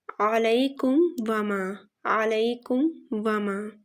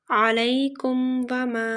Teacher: کے بعد یہاں پر، تو یہاں پر میم پر اظہار ہوگا، یعنی میم ساکن پر کوئی غنہ نہیں ہوگا، میم ساکن کی آواز کو ناک میں چھپا کر نہیں پڑھیں گے کیونکہ یہاں پر میم ساکن پر اظہار ہو رہا ہے، تو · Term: اظہار شفوی